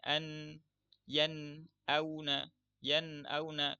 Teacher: huruf nun ini memiliki sifat bainiah, tidak syiddah, dan juga tidak rakhawah atau tidak terlalu mengalir tapi juga enggak terlalu tertahan